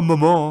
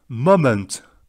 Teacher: C'est mo. On allonge le O. Et ment. Moment.